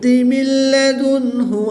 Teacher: نون ساکن کے بعد لام حروف ینوالون میں سے ہے تو یہاں پر ادغام بلا غنہ ہوگا یعنی غنہ نہیں کریں گے کہ بغیر غنہ کے ادغام کر کے پڑھیں گے.